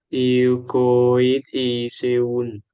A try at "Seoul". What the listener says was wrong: Seoul. Seoul? Seoul. Seoul, Korea. Seoul. Silent. We don't pronounce the E. Silent E. Seoul, Korea. We don't say Seoul. Seoul. Seoul, Korea.